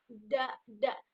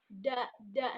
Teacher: menempelkan ujung lidah ke gigi gusi atas, da, dan ada ledakan di sini seperti huruf za tadi ya, da, nah begitu. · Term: huruf da